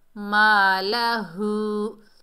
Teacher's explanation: یا مدہ کو ہم نے ایک الف کی مقدار کھینچ کر پڑھا، اور الف خالی سے پہلے زبر ہے، یہ الف مدہ ہے، اسے بھی ایک الف کی مقدار کھینچ کر پڑھیں گے، مالہو، اور ہا کے اوپر الٹا پیش ہے، ایک الف کی مقدار کھینچ کر پڑھیں گے، ہا کو بھاری ساؤنڈ سے پڑھیں گے، سینے سے ادا ہوگا